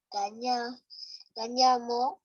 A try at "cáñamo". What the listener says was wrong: Fuerte, tiene que sonar fuerte ahí esa parte. Cáñamo. Cuando levantan la voz, en lo demás es como que se estén desinflando. Ya no hay fuerza. Cáñamo.